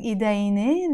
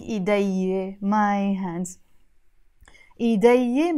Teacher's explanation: I'm dropping the n, the noon. So I'm saying idayye, my hands.